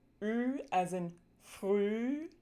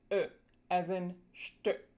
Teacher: we're going to take that Ü and we're just going to relax our tongue root a little bit. And when you do that, your tongue is going to fall back and down just a little bit.